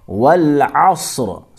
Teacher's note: صاد موٹا، را بھی موٹا یعنی پر پڑھیں گے